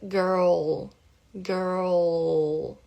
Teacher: primeiro enrola a língua para fazer o R e depois, né, vai lá pro céu da boca para fazer a pronúncia correta do L